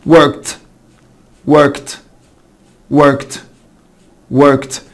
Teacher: الكه ساوند شكل work work، بتنتهي بالكه ساوند فتبقى worked worked worked worked. يبقى الاي ما اتنطقتش والدي نطقت تي.